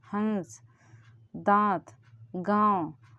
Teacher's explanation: नाक का थोड़ी सी हेल्प लेते हैं। हंस दांत गांव यह नाक से हवा निकल रही है। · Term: अनुनासिक स्वर